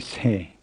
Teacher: try and get an audible h after the s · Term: aspirated s